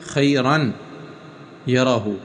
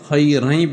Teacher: لکھا ہوا تو ہے خیرن یرہ، اب تنوین کی اپنی آواز تو یہ ہے خیرن یرہ، لیکن جب ملائیں گے تو اس وقت تنوین کی اپنی آواز ختم ہو جائے گی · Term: ادغام